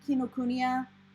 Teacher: if you're going off of actual japanese pronunciation typically there's no emphasis on any syllable